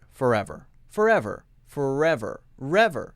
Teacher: the R jumps directly into the next sound. Re. Forever.